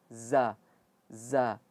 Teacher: Za itu dia ujung lidah tetapi mengenai gigi seri atas dan bawah.